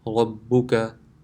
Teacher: This ra has a fatha, so it will be pronounced with full mouth.